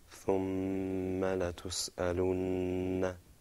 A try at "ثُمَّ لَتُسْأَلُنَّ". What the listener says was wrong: Good. Very good. Excellent.